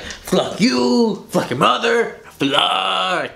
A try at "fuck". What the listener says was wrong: Oh, you're trying to say fuck. No, you're not saying fuck, you're saying fluck. You're putting the L in there. Why are you putting the L? No, you're definitely saying fluck. Yeah, that's what you are saying. But it's fuck. It's pronounced fuck. There's no L.